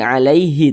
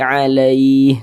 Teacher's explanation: disukunkan yakni huruf Ha ini kan kita baca alai nah gitu kalau kita berwakaf di huruf ha kita baca alai bukan Alaihi tapi alaih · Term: mad lin